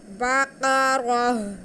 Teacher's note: अब हम यहाँ पे वक्त कैसे करेंगे, हम यहाँ पे ता को हा में बदल कर साकिन कर देंगे तो हमारा वक्फ हो जाएगा